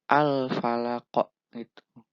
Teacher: Huruf qalqalah yaitu qaf berada di akhir kalimat atau ayat. Maka cara membacanya huruf qalqalah dipantulkan dengan kuat. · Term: qalqalah kubro